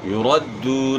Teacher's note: واو ساکن سے پہلے پیش ہے، ایک الف کے مقدار کے برابر آپ نے اس کو کھینچنا ہے، یعنی دال کی پیش کو آپ کھینچیں گے تو واو ادا ہوگا، یعنی واو پڑھا جائے گا.